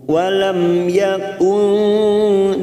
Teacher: mim sukun bertemu ya idhar safawi kita baca jelas tanpa mendengung.